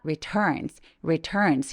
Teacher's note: he returns home 할 때 returns 아 요게 발음이 참 어려운데요 강세가 이렇게 return처럼 두 번째 음절에 있을 때에는 첫 번째 음절에 힘을 조금 빼고